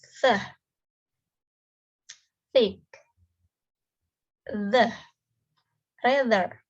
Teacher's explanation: Air is forced through upper teeth and tongues. It is dental.